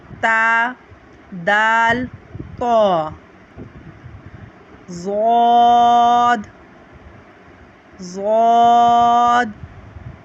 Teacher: जुबान की नोक और ऊपर के दांतों की जड़ से · زبان کی کروٹ اور اوپر کی داڑھوں کی جڑ سے اس کو ہم ادا کرتے ہیں